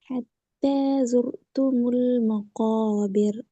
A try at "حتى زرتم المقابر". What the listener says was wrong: மாவை தூக்கல, அது மா வருது, மா அல்ல மே. مقابر. مقابر.